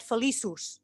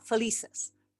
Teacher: for the masculine, we get felizus with U, and the feminine, we get a Schwa, felices